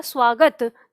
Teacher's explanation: जैसे ही हम दंत स के तुरंत बाद व का उच्चारण करते हैं तो हमें ये स और व के बीच में ऊ की ध्वनि सुनाई देती है